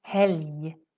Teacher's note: when we have LG, it kind of sounds like a Y sound.